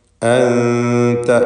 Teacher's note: സാക്കിനത്ത് നൂനിനെ ഇഖ്ഫാ ഹഖീഖി നൽകി മറച്ചു മണിച്ചു ഉച്ചരിക്കുക